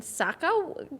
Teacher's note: do a little bit of the like vocal fry at the end